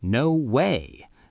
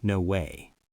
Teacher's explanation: the key is the rising intonation on way. It should go up like this. No way. Not flatlike.